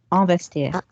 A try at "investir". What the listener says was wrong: No on. I do not want to hit on. I want to hit an. These lines, despite the best efforts of Retinol, are because of you lot saying on, mainly him in the bottom corner.